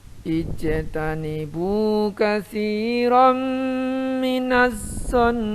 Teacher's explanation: ada idgham bi gunnah dan mim musyaddadah, maka dibaca gunnah